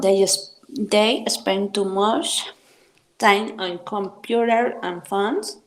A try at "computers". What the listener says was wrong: Computers. Sí, no está nada más de Okis ahí la S. Ojo con esto. Y esto es algo que sucede mucho con las personas que aprenden inglés desde el español.